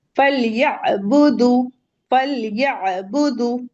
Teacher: فَلْيَعْبُدُوا، یعبدو نہیں کہیں گے حمزہ سے، فَلْيَعْبُدُوا، اور یہاں پہ آپ کا جو واو ہے یہ بھی 2 کاؤنٹ پڑھا جائے گا، فَلْيَعْبُدُوا۔